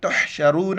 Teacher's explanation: را پر چونکہ پیش موٹا کر کے پڑھیں گے